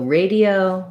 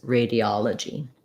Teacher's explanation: in radio it's not stressed and radiology that's the stress syllable